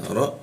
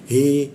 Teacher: Ibra masuk ke ro ujung lidah posisinya di bawah hidung dia. Ibra hi masuk ke h tenggorokkan bagian bawah